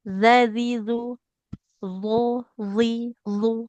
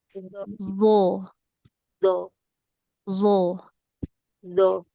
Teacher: Dza dzi dzi sama posisinya. Cuman bedanya kalau zal kan tipis, kalau d tebal.